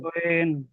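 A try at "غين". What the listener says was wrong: কিন্তু মুখ গোল করে পড়তে হবে গইন।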